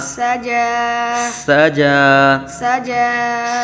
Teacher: سین حروف صفیریہ میں سے سیٹی کی طرح تیز آواز نکلے گی اور جیم کھڑا زبر قائم مقام الف مدہ، ایک الف تک کھینچ کے.